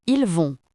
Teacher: Attention, le T ne se prononce pas.